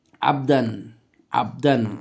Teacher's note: অর্থাৎ আমরা তানবিনের উচ্চারণটাকে পুরোপুরি স্পষ্ট উচ্চারণ করছি কেননা এটা এজহারের অক্ষর এসে গিয়েছে